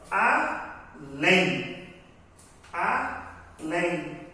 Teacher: Observa que a última sílaba, ela é pronunciada com intensidade. Ela é forte, então é a sílaba tônica, aqui é a sílaba átona.